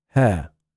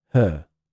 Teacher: So instead of hair, people say her. And instead of fair, they say fur. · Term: phonemic shift